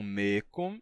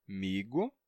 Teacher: esse som de k está entre vogais no mecum, ele terminou sendo sonorizado e se tornou g, migo. Na passagem de mecum a migo, temos algumas transformações, algumas alterações. · Por exemplo, a gente perde a nasalidade do final e também o som de k, como está entre duas vogais, termina se sonorizando em g, porque a diferença de k para g é só que o g é sonoro. Então, como esse k estava entre vogais, então ele terminou sonorizando o k e transformando em g.